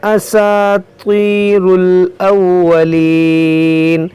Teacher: यहाँ पर देखें ये त्वा है, ये त्वा हुरूफ मुश्तालिया है, इसको मोटा करके पढ़ेंगे।